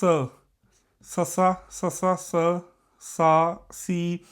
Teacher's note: ਜਦੋਂ ਅਸੀਂ ਸ ਬੋਲਾਂਗੇ ਸਾਡੀ ਜ਼ੁਬਾਨ ਉੱਪਰਲੇ ਪਾਸੇ ਦੰਦਾਂ ਦੇ ਅੰਦਰ ਲੱਗ ਰਹੀ ਹੈ